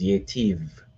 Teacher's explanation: the I sound becomes an A, represented by tsere, so it becomes Yetiv. And then the I can also become a short E or sagol.